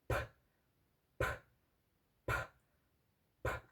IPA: p